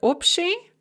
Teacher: We see this most commonly in the word obshi, general or common, and its various derivatives such as общежитие. So that b before the sh in общий or общежитие is pronounced more like a p.